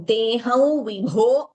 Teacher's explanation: अनुस्वारा फॉललोड बाय व give the nasal tone · Anuswara followed by va. We give the nasal tone. Teham vibho, bho mahaprana.